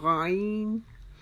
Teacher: ہماری زبان کا جو پچھلا حصہ ہے اس کو ہم اوپر کی طرف کریں گے تو ہمارا غین ادا ہوگا. غین ادا کرتے ہوئے ہم نے خیال رکھنا ہے جیسے ہماری آواز، جیسے ہم کہتے ہیں غرغرہ کرتے ہوئے ہماری آواز آنا تھی غین، اس طرح ہماری آواز غین میں آئے گی.